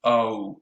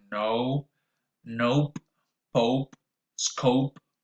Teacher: So the diphthong O begins with O and it ends with U. So together it goes O, as in no, nope, pope, scope, and so on and so forth. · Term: O diphthong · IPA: [ow]